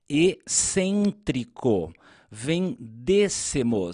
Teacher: Veja que a palavra excêntrico e vendêssemos tem a sílaba tônica fechada.